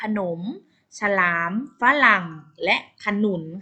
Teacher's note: พยางค์แรกจะออกเสียงอะกึ่งเสียงและพยางค์ที่2ออกเสียงตามรูปสระที่ผสมอยู่